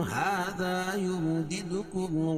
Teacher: دال پر قلقلہ کریں گے، دوسری والی دال پر. کیوں؟ اس پہ جزم ہے.